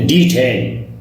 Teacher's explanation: So we make stress on the first syllable. جو ڈی ہے یہ پہلا سیلیبل ہے.